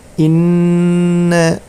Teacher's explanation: terdapat nun tasydid, yaitu termasuk hukum bacaan gunnah, ya. Cara membacanya ditahan, diperpanjang.